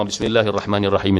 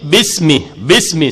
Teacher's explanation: Bismi sifat mahmus, dibaca berangin. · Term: sifat hams